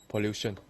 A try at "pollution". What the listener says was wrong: Excellent. Very good.